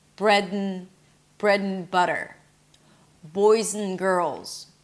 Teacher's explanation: So I'm reducing everything together. I even connected the d to the n immediately. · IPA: /brɛdənˈbʌtər/